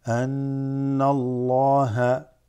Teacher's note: Ghunna has a shadda, and you hold it in nasal vibration of the nose.